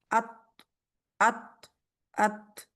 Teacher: तो जुबान की नोक आगे दो दांतों के वह दानेदार हिस्से से लगी हुई है।